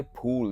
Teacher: फूल दोनों होठ मिला के